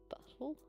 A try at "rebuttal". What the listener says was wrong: Rebuttal. Rebuttal. Bro, where the T's at? Why do you just decide them T's don't matter? But why though? That's silly.